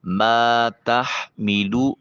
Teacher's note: ما الف خالی از حرکت ما قبل مفتوح الف مدہ ہے، ایک الف کے قیم مقام اس کو لمبا کیا جائے گا۔ ہا کو حلق سے ادا کیجئے۔